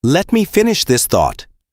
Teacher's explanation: Said with a calm, falling tone, at a slightly slower pace than usual, it reads as a simple statement of fact